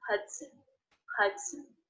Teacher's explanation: there's the schwa vowel in there as an unstressed syllable it's very fast when the schwa is followed by the end sound we don't